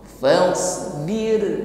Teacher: Tetap takrir, tetap bergetar, namun getarannya tipis karena sebelumnya ada harokat kasrah